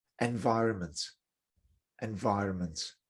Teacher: remember with this word environment you don't pronounce the middle n the middle n is silent